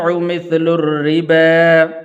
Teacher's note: را کے نیچے زیر ہے تو اس لیے اس کو باریک کر کے پڑھنا ہے۔